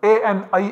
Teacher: From Kantha Talu, two places of articulation coming together, a and I, are produced.